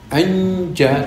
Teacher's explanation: Makhrajnya jim kan lidah diangkat. Tapi ketika nun mati bertemu jim, lidah tetap di bawah. Nanti saja kalau sudah ja itu baru lidah diangkat. Jangan ketika an itu sudah naik ya. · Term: ikhfa